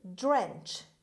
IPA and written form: drentʃ (drench)